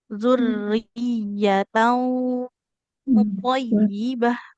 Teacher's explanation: Kemudian ikhfa-nya karena tanwinnya berhadapan dengan huruf to yang tebal, maka bunyi ikhfa-nya, dengung ikhfa-nya ikut ikut tebal